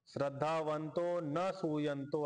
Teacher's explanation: अनुसूयचा जो अ आहे तो पाठीमागे जाऊन सायलेंट झाला त्याचा उच्चारण होणार नाही